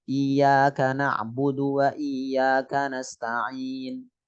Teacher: dah itu kayak sukun terus ada ekornya gitu ahah itu dah ismam mati terus isyarat dengan bibir mecucu monyong